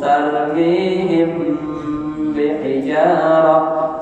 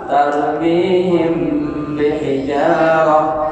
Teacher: Hurufnya hanya satu ba. Jadi jika mim mati ketemu dengan ba, ya, dia dibaca dengung. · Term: Ikhfa syafawi